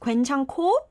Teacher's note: 괜찮고, it should be pronounced 괜찮고 because under tan there is this h sound and it moves on to the next syllable and it makes it 괜찮고.